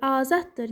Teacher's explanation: Amma azaddır sözündə, baxın, birinci D, T səsini ifadə edir